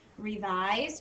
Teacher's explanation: Again, magic E, jumps over the consonant, taps on the vowel, says say your name, and the I says I. This S is kind of tricky because it almost makes a Z sound, revise, but it's an S, so don't put a Z in.